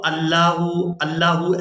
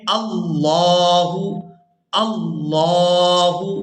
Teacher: لفظ اللہ کے لام سے پہلے والے حرف پر اگر زبر یا پھر پیش ہو تو لفظ اللہ کا لام پورا ادا ہوتا ہے، اور اگر نیچے زیر ہو تو باریک ادا ہوتا ہے۔ تو یہاں ہم نے لفظ اللہ کے لام کو پورا ادا کرنا ہے کیونکہ اس سے پہلے والا جو حرف ہے اس پر زبر ہے، تو یہاں ہم لفظ اللہ کے لام کو پورا ادا کریں گے۔